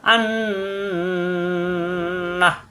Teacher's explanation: নাকের ভিতরে গুনগুন করাকে অজীব গুন্না বলা হয়। একটু বেশি সময় ধরে রেখে গুন্না করতে হয়। আন না, এই যে নাকের ভিতরে ধরে রেখে গুনগুন করলাম, এটাকে বলা হয় গুন্না।